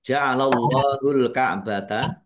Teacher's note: Allahnya dibaca tebal karena harakat di depannya fathah. Lam fathah berdiri mad thobi'i panjang dua harakat.